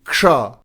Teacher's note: क बोलने के लिए तैयार हो और श का उच्चारण करें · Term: संयुक्त व्यंजन